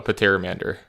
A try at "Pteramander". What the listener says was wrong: There is no the P is silent.